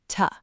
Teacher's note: But inside a natural sentence, that ooh sound changes completely. It becomes a short, weak sound that sounds like tuh.